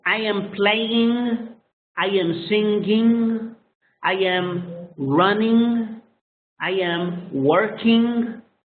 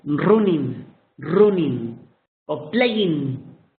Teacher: You use the ing sound with a g at the end for a fraction of a second.